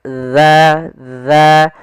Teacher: Ujung makhrajnya agar sempurna adalah kita sesuai makhrajnya yaitu ujung lidah kita menempel dengan gigi seri atas